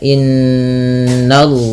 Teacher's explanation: n-nya tipis, baru di sini lafzul jalanya ditebalkan